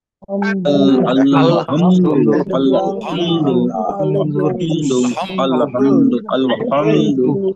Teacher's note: এই হাটা কিন্তু গলাটা চেপে পড়তে হয়।